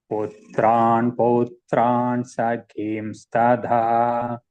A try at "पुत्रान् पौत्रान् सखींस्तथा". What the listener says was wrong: Tada no. Tatha. Tha. Second tha. Tha. Tadha no.